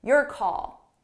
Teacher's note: So notice how call is a little bit louder and longer.